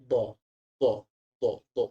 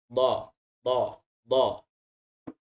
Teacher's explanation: huruf d ini bukan huruf hams dia adalah huruf jahar jadi dia tidak ada aliran udara